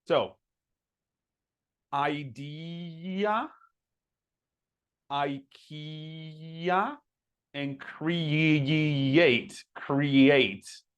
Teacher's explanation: There's like that little Y sound. That's why it's linking between vowels